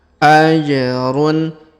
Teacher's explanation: huruf ja berharakat sukun kita pantulkan